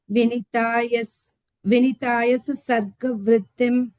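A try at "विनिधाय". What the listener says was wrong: And dha, second dha in Sanskrit. Vinidhaya. Dha. Yeah, the DH, dha, Vinidhaya.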